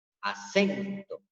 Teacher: Aquí está la palabra acento. Yo con mayor intensidad pronuncio la sílaba sen. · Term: acento prosódico